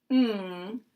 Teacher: ng, which is in a similar position to a K or a G.